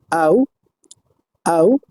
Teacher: আ এবং উ ধ্বনির সমন্বয়ে আউ ধ্বনিটি গঠিত হয়েছে। এই ধ্বনিটির প্লেস অফ আর্টিকুলেশন হচ্ছে প্রথমে আ এর প্লেস অফ আর্টিকুলেশন থেকে উ এর প্লেস অফ আর্টিকুলেশন পর্যন্ত একসাথে দুইটি ধ্বনি উচ্চারিত হবে। · প্রথমে মিডল অফ টাং, দ্বিতীয়ত ব্যাক অফ টাং, অর্থাৎ মিডল অফ টাং থেকে ব্যাক অফ টাং পর্যন্ত এই ধ্বনিটি উচ্চারিত হবে। এই ধ্বনিটির ম্যানার হচ্ছে number one, the tongue is স্যাট lower than উ, অর্থাৎ জিহ্বাটি মুখগহ্বরের মধ্যে অবস্থান করবে কিছুটা নিচে উ এর চেয়ে। · ধ্বনিটি একটি দীর্ঘ বা দ্বিত্ব ধ্বনি। এই ধ্বনিটি 2টি শর্ট ভাওয়াল সাউন্ডের সমন্বয়ে গঠিত। প্রথমটি হচ্ছে শোয়া সাউন্ড আ।